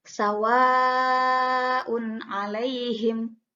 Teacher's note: Maka dibacanya 4 harokat, sawaun alaihim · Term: mad wajib muttasil